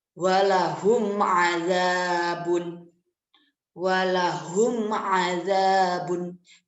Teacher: Jadi apabila mim sukun itu bertemu dengan salah satu huruf izhar syafawi, maka dibaca itu jelas, tidak ada dung sedikit pun.